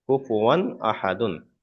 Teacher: হুরুফে হালকির ছয়টি অক্ষরের মধ্যে থেকে একটি অক্ষর এসছে হামজা, তাই তানবিনটাকে বিনা গুণায় জাহির করে পড়তে হবে, অর্থাৎ গুণা করা যাবে না। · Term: ইজহারের কায়দা